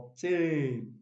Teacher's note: prime stress on the second syllable